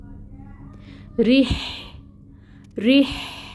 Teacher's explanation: ठीक है, फिर आगे हा है। हा की हम्स जो है वो सिफत है इसकी, उसको हमने वाज़िया करना है